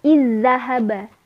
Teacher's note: Cara membacanya memasukkan ke huruf yang kedua. Jadi seolah-olah dal itu bertasydid. Hurufnya ganda ya, sama. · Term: idgham